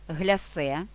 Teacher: наголос ставимо на другий склад як і у французькій мові з якої походить назва